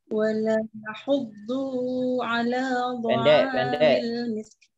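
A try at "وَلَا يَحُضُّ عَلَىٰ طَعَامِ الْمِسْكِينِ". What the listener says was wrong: Du-nya satu ketuk, Bu. Langsung pindah ke ala.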